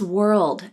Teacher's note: the tongue is pulled up and back for were then it's pulled down and the tongue tip can either come up to the roof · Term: dark L